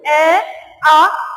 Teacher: पहले हम बात कर रहे हैं कंठ ध्वनि, यानी आपका ए और जो आ है, ए और आ कहाँ से उच्चारित होते, आपके कंठ से उच्चारित होते